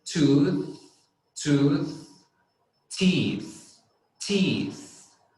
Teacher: If you look at me, if you look at my face when I'm pronouncing it, you're going to see that my tongue goes out